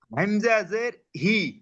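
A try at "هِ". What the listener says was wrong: এটা হামজা না হা, হা জের হি।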